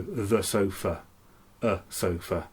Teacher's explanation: we tend in english to use this non-descript vowel the schwa